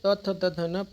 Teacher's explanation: न पांच दांत ऊपरी दांतों के निकट यानी जीव जो है अपना जीवा जो है दांतों को ऊपरी वाले हिस्से को टच करता है ना कि नीचे वाले को इसे दंत बोलते हैं जो है पूर्ण नाम सॉरी वर्ण नाम